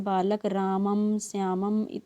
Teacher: अच्छा, जैसे हम भूल जाते हैं तो अनुस्वार में क्या लिखा है, अनुस्वार नू नू ना है ना, ना मतलब नाक से, नासिका से, नाक से, है ना, नासिका से इसका उच्चारण स्थान है। तो अनुस्वार का जो उच्चारण स्थान है वो नासिका से है।